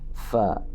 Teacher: Fa ujung gigi dengan perut bibir bawah, bukan dua bibir ya. Bibir atas tidak terlibat, ujung gigi atas dengan bibir bawah. Fa, nampak gigi kelincinya.